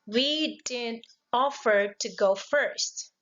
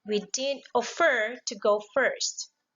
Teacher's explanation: The offer here is a verb, but the stress mark falls into the first syllable and not to the second. We cannot say, we didn't offer to go first.